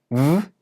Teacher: To make a voiced consonant, you have to use your vocal cords. So when I say the v sound in the word love, I'm using my vocal cords. And when I touch my throat, I can feel it vibrating